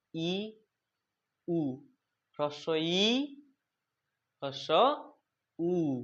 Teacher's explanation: ঠোঁট দুটোর মধ্যে, ওষ্ঠ এবং অথরের মধ্যে ফাঁক দেখো প্রায় নেই বললেই চলে। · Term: সংবৃত